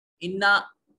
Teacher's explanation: इन्ना नून मुशद्दद है, गुन्ना वाजिब होगा